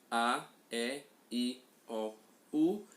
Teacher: Nós emitimos estes sons A, E, I, O, U e não há nenhuma obstrução, nenhum obstáculo à passagem desse A. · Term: vogais